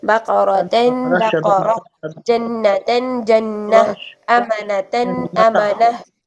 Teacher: गोल ता पर दो ज़बर हो तो आपने उसकी आवाज को हा साकिन में चेंज कर देना है